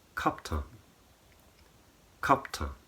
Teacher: And so the N at the end of the word is missing, but also, and more interestingly perhaps, the A in the first syllable and the A in the second syllable in Turkish is exactly the same pronunciation